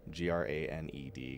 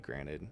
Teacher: That second T or that late T for me is tough. I drop that T all the fucking time